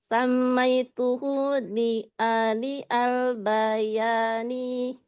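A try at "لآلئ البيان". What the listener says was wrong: Nama kitabnya bukan li'ali, tapi la'ali'a. La'ali'u. Tapi karena di situ posisinya menjadi maf'ul, menjadi la'ali'a.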